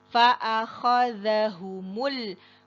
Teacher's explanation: dalal itu dengan mengeluarkan sedikit lidah ya satu makhraj dengan tsa cara mengucapkannya sama bedanya tsa ada angin dalal tanpa angin